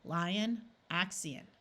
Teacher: In these two words, you have a clear I sound, lion and axion. The I sound in both of these words was a clear long I, but the O schwad and sounded more like a short U, lion, axion.